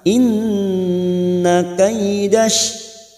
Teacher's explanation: Nun yang bertasdid gunna musaddadah kita tekan selama 3 harakat.